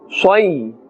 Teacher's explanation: we are pronouncing this with a full mouth because this is part of the huruf musta'aliyah, those 7 letters that must always be pronounced in a thick tone.